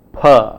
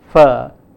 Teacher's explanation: the plosive sound p, which is a bilabial sound, and the fricative sound f, which is a labiodental sound